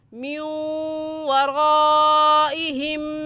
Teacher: یہ واو دیکھنے میں ایک ہے اور پڑھنے میں 2 مرتبہ پڑھا جائے گا، ایک مرتبہ نون کے ساتھ ملا کر اور ایک مرتبہ خود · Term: ادغام